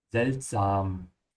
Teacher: It's seltsam with an open a.